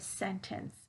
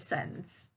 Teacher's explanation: i use the glottal t i don't use that true t to pronounce the word